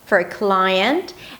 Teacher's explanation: there is this rising-rising intonation, the up-speak, where I go up.